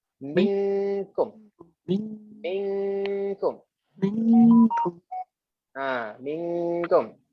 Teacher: Masa kita ikhfakan nun ni, lidah kita dah berada kat tempat kaf. Dah tempek tu kat situ.